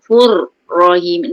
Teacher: Lidah tu bergetar. 2 atau 3, jangan banyak sangat fur macam motor. Okey. Kena ada getaran.